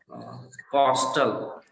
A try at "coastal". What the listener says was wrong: Yeah, coastal. So be cautious of that, that we're not stressing it too much. It would be like coastal. Coastal.